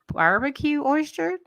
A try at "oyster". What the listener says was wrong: You still say oyster. There's no H in there. There is no S that turns into an